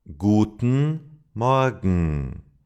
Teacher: You cannot hear the g and it's a nasal sound because the sound is expelled through the nose and not through the mouth. So gen becomes G and Morgan sounds like Morgan. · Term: ng n sound